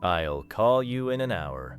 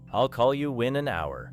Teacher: In natural speech, it may sound more like I'll call you in an hour. The words you in can connect. The words in and can connect. The words in hour can connect.